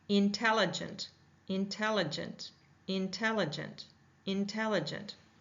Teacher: most of the stress of the word is going to fall in tell. We're really going to hear that tell in really focusing on that tell when we're pronouncing it.